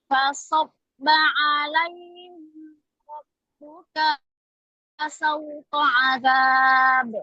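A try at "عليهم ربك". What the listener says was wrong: Alaihim ra. Mimnya harus jelas. Jangan alaihim ra. Alaihim. Tidak sempurna. Alaihim ra. Saya mencontohkan saja tadi ya. Alaihim rabbuka.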